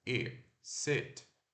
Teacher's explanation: É o I relaxado que ele é mais curto, é I, sit. Não é sit, não é um E, é um I, tá?